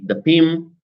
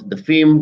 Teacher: We change the consonant. We have stop to fricative alternations.